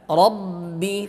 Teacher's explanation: Ba syiddah tertahan antara kedua bibir kita. Rabbi terkatup.